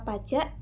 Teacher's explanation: di mana jak itu terdapat bunyi glotal sebagai pengganti huruf K sebagai penutup suku kata